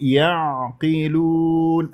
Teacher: اريد العين عميقه وكانه عم تبلع شيء وتحس بانزعاج في المخرج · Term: العين الساكنة بينية